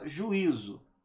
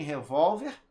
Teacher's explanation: de acordo com a posição da sílaba tônica ambas são paroxítonas